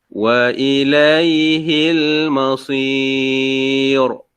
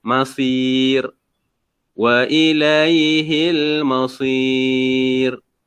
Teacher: Jadi di sini huruf sad berbaris di bawah. Jadi ra ni jangan dimatikan dengan tebal. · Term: Ra tu nipis